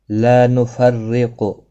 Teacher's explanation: را زیر کی وجہ سے باریک پڑھا جائے گا، قاف مستعلیہ ہے، پر پڑھا جائے گا۔